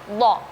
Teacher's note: Nah, contoh seperti huruf dhad. Nah, huruf dhad ini kan memang letakkan lidah itu ketika melafalkan huruf dhad kita lebih ke pinggir kanan atau pinggir kiri